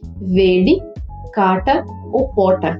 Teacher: Esse fenômeno consiste em uma retroflexão da oclusiva alveolar · consiste em uma retroflexão da oclusiva alveolar, p ou d, quando essas oclusivas estão depois de um rótico.